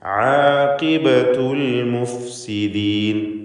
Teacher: ആഖിബത്തു ഖാഫിന് കസ്റാണ്, കുറഞ്ഞ തഫ്ഖീം മാത്രം നൽകിയാൽ മതി.